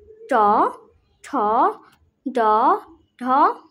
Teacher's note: তালু আর জিভে মিলে মূর্ধন্য। ট ঠ ড ঢ মূর্ধন্য।